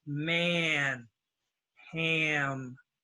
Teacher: mouth mmm because it's coming out the nose mmm and so the a becomes a nose sound